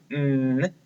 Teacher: N is a consonant sound, and it is voiced, and it is nasal, which means it goes through our nose.